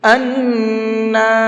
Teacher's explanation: تھوڑی دیر آواز کو ناک میں روکیں گے، اور ساتھ ساتھ نون کو تھوڑا سا کھینچیں گے بھی، اس لیے کہ نون کے اوپر کھڑا زبر ہے۔ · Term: غنہ